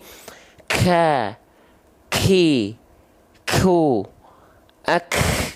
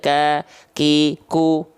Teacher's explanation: Hams itu sebenarnya artinya adalah mengalirkan nafas, mengalirkan hembusan angin, mengalirkan nafas. Tapi pengkhususan untuk huruf kaf dan ta, dia hanya berupa percikan nafas saja. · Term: sifat hams